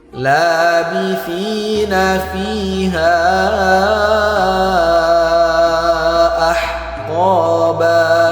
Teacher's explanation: Mad thobi'i berjumpa dengan hamzah atau alif dalam dua kalimat. Maka dia harus kita panjangkan enam harakat disebut dengan mad jaiz munfasil.